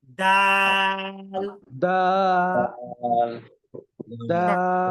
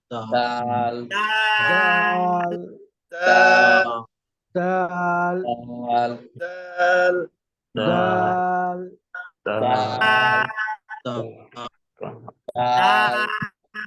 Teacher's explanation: জিহ্বার আগা সামনের উপরের দুই দাঁতের গোড়ার সাথে লাগাবেন।